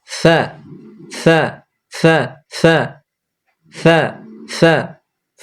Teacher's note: উপরকার দুই দাঁতটা দেখতে পাওয়া যাবে নিচকার ঠোঁটের ভিজে অংশে লাগবে · ফা নিচের ঠোঁটের ভিজা অংশ উপরকার 2 দাঁতের আগা লাগিয়ে দিলেই ভিতর থেকে হাওয়া দিবেন, দিয়ে বের করে দিবেন। ফা হয়ে গেল।